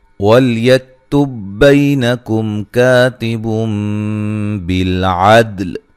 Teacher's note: وَلْيَكْتُبْ بَيْنَكُمْ كَاتِبٌ بِالْعَدْلِ، لام کو ہلانا نہیں ہے، حروف قلقلہ کے سوا کسی بھی حرف کو ہلا کر نہیں پڑھنا حالت جزم میں۔ یک کاف کو باریک پڑھنا ہے، ہلانا نہیں ہے